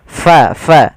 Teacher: untuk huruf Fa harus hati-hati harus alirkan nafasnya Jangan sampai kita merubahnya menjadi palaqo diganti dengan p maka di sini jangan sampai diganti dengan P tapi pakai f